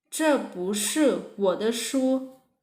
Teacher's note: Remember, 是 is the fourth tone, right? So we pronounce 不 as the second tone.